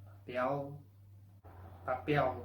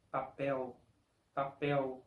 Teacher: La letra L al final de una sílaba suena exactamente como una U. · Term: sonido de U